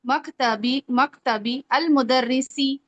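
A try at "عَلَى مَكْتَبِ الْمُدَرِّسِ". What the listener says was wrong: मिलाए ना, मिला पढ़ना होता है। अल मुदरिसी क्यों पढ़नी है? मकतबिल मुदरिसी। जब भी अलिफ लाम आता है आपने मिलाना होता है। तभी तो वो शमसी कमरी वाला हमने पढ़ा है ना, वाला मसला आता है। तो मकतबिल मुदरिसी,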